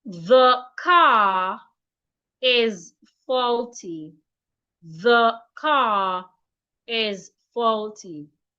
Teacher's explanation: I need to pronounce car and is as one word because I have linked the R and the E in is together